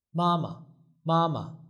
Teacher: the second one becomes a neutral tone.